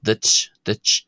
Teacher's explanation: The sound that we hear here at the end of duit, duit is actually closer to a t sound than it is to the English ch.